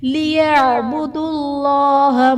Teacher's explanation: اسم جلالت اللہ عز و جل کے لام کو پر یعنی موٹا پڑھا جائے گا۔